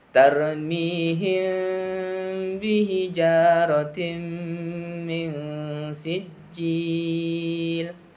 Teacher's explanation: Syafawi adalah apabila mim sukun bertemu dengan huruf ba cara membacanya suara mim sukun disamarkan Posisi kedua bibir tidak tertutup rapat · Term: Ikhfa Syafawi